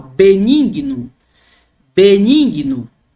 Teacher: observe que o E aqui, ele se torna mais longo, mais demorado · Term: eta